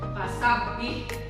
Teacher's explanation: Banyak yang bertasdid seperti huruf ba, kemudian huruf waw ya. Nah, yang bertasdid itu dibacanya rangkap. Jadi seolah-olah dibacanya dua kali ya, double.